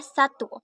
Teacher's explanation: dengan ciri-ciri mati oral apiko alveolar fricative